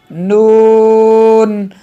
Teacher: ज़बान का किनारा और अनायाब से सनाया तक के दांतों की जड़ों से अदा होता है